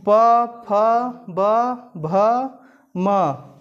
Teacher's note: अब प वर्ग का जो उच्चारण स्थान है यह ओष्ठ होता है। जब इसको पढ़ेंगे आप कि प, फ, ब, भ, म, तो आप स्वतः ही जान जाएंगे कि इसका उच्चारण स्थान ओष्ठ होता है।